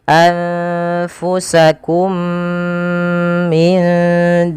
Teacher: memasukkan mim pertama kepada mim kedua dan ditahan suara mnya maka tidak langsung ya tapi ditahan dahulu kemudian pada lafal minarikum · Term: Idgham Mimi